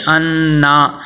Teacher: زبر حرکات غیر مدہ میں سے اس کو لمبا نہیں کرنا